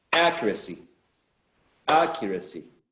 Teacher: So if we clap, the clap should be on the first syllable. · the stress should go on the first syllable